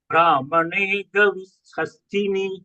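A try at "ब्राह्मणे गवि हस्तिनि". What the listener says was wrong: సంయుక్తక్షర combination of హ అండ్ మ బ్రాహ్మణ బ్రాహ్మ హ ఆల్సో షుడ్ బి హర్డ్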